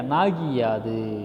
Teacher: குற்றியல் இகரம் அந்த ஓசை என்ன பண்ணுது ஒரு மாத்திரையில இருந்து என்ன பண்ணுது அப்படின்னா குறுகி அரை மாத்திரையாக ஒலிக்குது